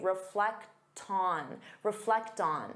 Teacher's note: because you have that T sound, you can transfer it to the next sound and say reflect on.